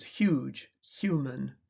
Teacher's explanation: In words such as huge, human, the phonemic transcriptions huge, human, imply that the words begin with a voiceless fricative h followed by a voiced approximant y. But the initial sound is phonetically a single sound hy. Voiceless palatal fricative.